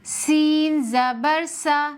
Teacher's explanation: سین کے اندر سیٹی کی بھی صفت ہے، یعنی سین کو جب بھی پڑھیں گے ایک تیزی کی آواز آنی چاہیے۔ سین میں سختی کی بھی صفت ہے، سین کو تھوڑا ٹائٹ کر کے پڑھیں گے، سافٹ نہیں پڑھیں گے